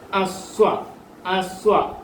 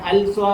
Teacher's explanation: അലിഫ് ലാമിന് ഉച്ചാരണം ലാലീലു എന്ന് പറയത്തില്ല, ഉച്ചരിക്കത്തില്ല. ലാമിനെ പറയത്തില്ല. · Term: ലാമിന് ഉച്ചാരണമില്ല